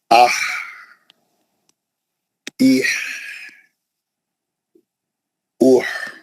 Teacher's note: یہ جو ہا ہے نا, یہ جو مرکزی حلق کا, اس میں آواز نہیں نکالنا, کوئی آواز نہیں آتی بالکل. صرف ہوا کا پریشر کا جو آواز رہتا وہ آواز رہتا.